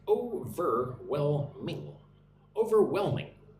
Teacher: Put the emphasis on the third syllable.